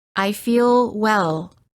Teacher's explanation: Notice how the L is prolonged by keeping the tongue up longer. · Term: The American L